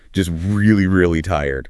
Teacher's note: By the time you hit the phrase really, really tired, your pitch naturally drops, conveying the exact physical emotion of exhaustion.